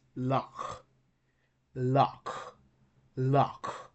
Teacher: It's like a uvular fricative sound. So there is a lot of friction on your uvula